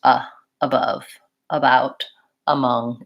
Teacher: you really want to get that light unstressed up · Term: schwa